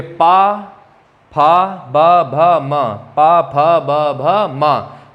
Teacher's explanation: पा वर्ग जो है पा, फा, बाबा, माँ, इनको बोलने पर हमारे होंठ जो हैं आपस में चिपक जाते हैं। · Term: ओष्ठ्य वर्ण